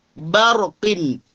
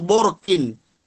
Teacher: berhati-hatilah jangan sampai menebalkan huruf ba